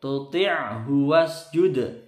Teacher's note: Wasjud dalnya sukun ini qalqalah sugro mantul ya.